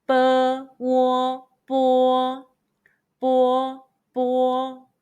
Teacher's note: Let's combine the initial B, the final Wo, and the high-pitched first tone all together.